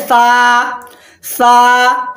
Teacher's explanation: इसको भी आप एक अलिफ के बराबर खींच के बोलेंगे, एक अलिफ के बराबर घसीट के बोलेंगे